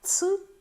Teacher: ц в нас складається з двох звуків т плюс с і коли ми перетремо якби так би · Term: африкати